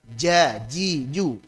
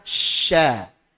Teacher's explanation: dari tengah lidah Jim syin ya Ja S ya ada hanya bedanya untuk Jim dia nempel untuk syin dan ya dia tidak nempel Ada jaraknya ja ji Ju nempel sedangkan syin dan ya tidak